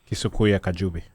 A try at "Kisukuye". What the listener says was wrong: It's Kisukuye. There's no U between K and Y. You said Kisukuye. But there's no U between K and Y. Where did that Kisukuye come from?